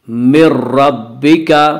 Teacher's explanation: نون ساکن کے بعد را رہا ہے اس لیے بغیر غنہ کے ملا کر پڑھیں گے۔ اسے ادغام بلا غنہ یا ادغام تام کہا جاتا ہے۔